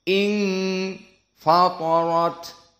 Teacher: ikhfa dibaca dalam keadaan dari khaysum, 2 harokat.